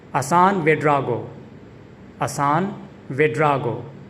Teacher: The emphasis is on the second syllable dra in the second part of his name, Ouedraogo.